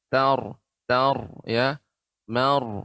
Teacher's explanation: jadi ta-nya tipis pengucapannya ta, kemudian ra-nya tebal.